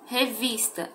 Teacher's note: sílaba tônica vi ela é uma paroxítona